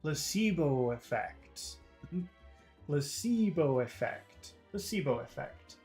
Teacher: I think everything becomes long, except for pla. Pla is short, but then everything becomes long in that phrase.